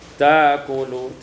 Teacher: ta'kul ibdalul hamzati alifan tukar hamzah alif